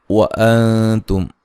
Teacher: नून साकिन का यहाँ इख्फा है बारीक, मीम साकिन का इज़हार है, गुन्ना नहीं करेंगे